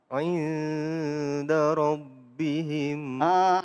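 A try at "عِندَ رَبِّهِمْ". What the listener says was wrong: Ainnya. Inda rabbihim.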